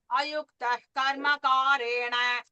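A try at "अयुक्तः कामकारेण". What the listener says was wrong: First time the Visarga was missed, Bagini.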